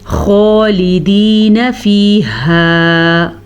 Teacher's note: خو کو پر پڑھیں گے، خو حروف مستعلیہ میں سے ہے، ہمیشہ ہی پر پڑھا جاتا ہے۔